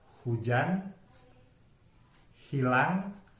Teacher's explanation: Dan yang terakhir bunyi glotal dan frikatif itu ada bunyi dalam kata bahasa Indonesia hujan, hilang itu diawali dari glotal frikatif.